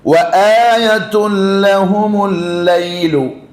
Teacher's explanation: ആദ്യത്തെ ലാമിന് ഷദ്ദുണ്ട്. അപ്പൊ ആ ഷദ്ദ് കൊടുത്ത് കടുപ്പിച്ചെന്നെ വരണം